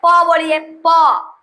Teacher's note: देखिए प, देखिए सट रहा है, आप बोलिए नहीं बोला पा रहा है, नहीं होगा। प बोलिएगा तो ओष्ठ में सट जाएगा